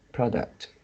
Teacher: When it is pronounced as a noun, the stress is at the first syllable, product. Become a product.